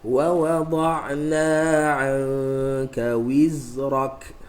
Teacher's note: Qalqalah tak ada pada zai kerana suara kita lepaskan. Qalqalah ni suara tak lepas, dia suara aqa, dia pantulan.